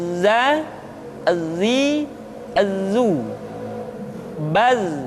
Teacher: Artinya ketika kita mengucapkan huruf za, suara kita mengalir, akan tetapi nafas tidak boleh mengalir. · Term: al-jahr